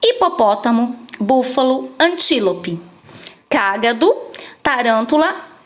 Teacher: proparoxítonas né a antepenúltima sílaba da palavra mais forte